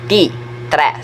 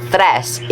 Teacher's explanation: A voiceless stop becomes a voiceless fricative